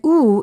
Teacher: oo is a back vowel because the back part of the tongue goes up in the back part of the mouth